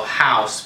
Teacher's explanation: the first part of the diphthong carries the emphasis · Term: diphthong ow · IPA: /aʊ/